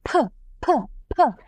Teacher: I'm pronouncing it while exhaling and while pushing some air flow out of my mouth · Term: aspirated sounds